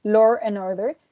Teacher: we had an intrusive r after law and before and